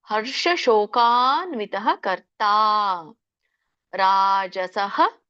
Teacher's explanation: ಶೋ ದೀರ್ಘ ಇದೆ, ಕಾ ದೀರ್ಘ ಇದೆ, ನಕ್ಕೆ ಒತ್ತು